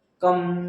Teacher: नाकातून बघा म चा उच्चार येतो कम. क अधिक कम आणि आहा, क अधिक आहा काहा. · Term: अनुस्वार